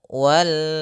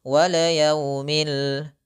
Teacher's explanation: dalam kata 'lam ', huruf 'lam ' tidak boleh dipantulkan.